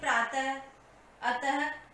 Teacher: विसर्ग का उच्चारण ह की तरह होता है